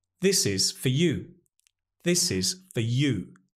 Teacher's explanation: We're stressing the you, so that's strong, but the for is unstressed, so we use the weak form. Again, the lovely schwa is here.